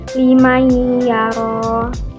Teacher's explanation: nun mati bertemu dengan huruf ya, di mana kita membacanya harus disertai dengan dengung. Jadi liman yara, dengung dan ditahan 2 harokat. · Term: idgham biguna